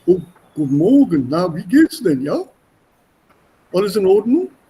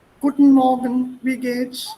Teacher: The entire chest cavity is used as a resonating chamber. And that's why you have this booming sound.